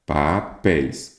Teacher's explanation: Qual que é a sílaba tônica? É a última. Então, quer dizer que ela é uma oxítona.